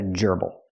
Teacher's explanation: Not a gerbil, but a gerbble. The stress is on the first syllable.